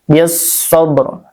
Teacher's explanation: Jadi dibacanya diidghamkan, langsungkan aja ke huruf shad, lamnya tidak terdengar ya. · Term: alif lam syamsiyah